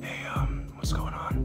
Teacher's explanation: a very airy, breathy, whispery voice. Almost like you have a throat sore or something like that.